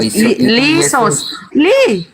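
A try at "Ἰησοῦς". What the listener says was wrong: Itu I bukan li I. Isos.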